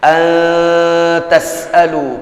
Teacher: nun sukun bertemu dengan huruf ta, ikhfa, ikhfa'nya ikhfa yang akrab. An tas'alu, pada proses ikhfa dan menyamarkannya dibutuhkan 2-3 ketukan.